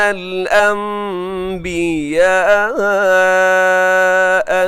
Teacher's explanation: نون ساکن کے بعد با، تو نون ساکن کو اب میم سے چینج کر دیتے ہیں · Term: اقلاب